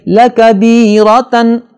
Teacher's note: را پر زبر ہے، اسے موٹا پڑھنا ہوگا